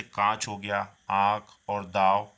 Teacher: अनुनासिक हो गया, इसका उच्चारण नाक और गले दोनों में किया जाता है।